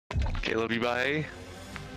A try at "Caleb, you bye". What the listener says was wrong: Yeah, well, you sounded more questioning.